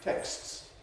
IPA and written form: teksts (texts)